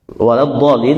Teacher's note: sebelum Dod itu lam kan lamnya dibaca tipis jangan ditebalkan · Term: huruf lam